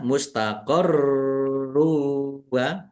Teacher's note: Kemudian roknya mustaqarru wa, roknya dibaca double juga. Ada tasdidnya, ditekan biar tampak double.